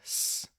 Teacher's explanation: Now make the sound s like a snake. You should be able to feel that this vibration is no longer there. You're no longer adding voice. It's a voiceless sound.